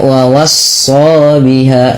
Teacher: Itu terlalu panjang cukup dua harakat dengan pendek saja. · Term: mad thabi'i